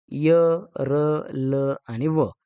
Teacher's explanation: यचं तालव्य, रचं मूर्धन्य, लचं दंत्य आणि वचं दंतोष्ठ्य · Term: अर्धस्वर